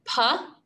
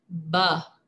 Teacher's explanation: The only difference between these sounds is their voicing. Puh is voiceless, whereas buh makes our voice vibrate. You can feel the difference by placing your fingers on your voice box.